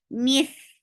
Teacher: Mith is heavy and make it two counts long.